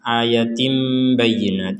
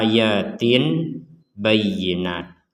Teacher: ba maka di sini ditulis dalam Quran Madinah itu huruf mim Jadi kalau ada tanwin bertemu dengan huruf ba maka cara membacanya tim seperti itu jadi tim lagi bukan Tin lagi